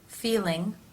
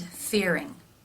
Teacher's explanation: in the L sound the tongue is more forward and therefore you can see it more easily through the teeth